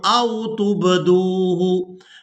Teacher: یہاں با ساکن پر قلقلہ کریں گے، یعنی با کو ادا کرتے ہوئے آواز میں جنبش پیدا ہوگی۔